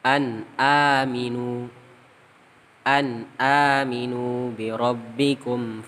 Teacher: nun sukun nya dibaca aja jelas tidak di tahan lama · nun mati nya atau Hook tanwinnya tadi dibaca jelas tidak ada dengung · Setelah nun sukun ada hamzah. Nah, maka nun matinya atau nun sukunnya dibaca jelas, tidak ditahan lama. Ingat, kesalahan dalam membaca idhar halqi itu nun sukun atau tanwinnya dibaca jelas tapi ditahan lama, itu salah. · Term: izhar halqi